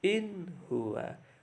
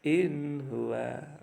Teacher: Nun sukun bertemu dengan ha, yang bacanya harus terang atau jelas.